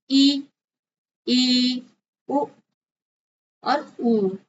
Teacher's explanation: संवृत लगभग बंद मुंह